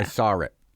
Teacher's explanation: the r gets actually put in